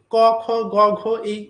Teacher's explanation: এগুলো হচ্ছে বাংলাতে ক খ গ ঘ, এগুলো হচ্ছে বাংলা হিন্দি সংস্কৃত সবেরই ক খ গ ঘ ম, এগুলো হচ্ছে স্নিগ্ধ তালব্য বা কণ্ঠধ্বনি। অর্থাৎ জিভের একেবারে পেছনের অংশ এবং ওপরে তালুর যে নরম অংশ বা স্নিগ্ধ তালুর যেটাকে বলা হচ্ছে সেই অংশে আঘাতটা হচ্ছে